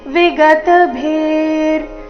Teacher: ವಿಸರ್ಗದ ಉಚ್ಚಾರಣೆ ಅರ್ಧ ರ ರೀತಿ